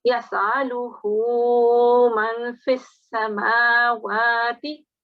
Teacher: we've got the inverted dhamma, which means you have to prolong for 2 seconds.